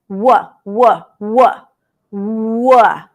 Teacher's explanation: it's actually both with the lips and the back of the tongue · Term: W sound